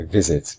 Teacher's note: the second syllable is not stressed